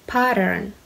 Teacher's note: pay a bit closer attention to its pronunciation the flap T and R sound